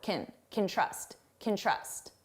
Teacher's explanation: When can is the auxiliary verb. So, it's not the main verb. We reduce this to can. And it's very unstressed sound. · you hear trust more because it's the main verb and can which sounds like can is very short.